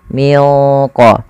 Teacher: Dia membacanya menyamarkannya kepada huruf qf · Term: ikhfa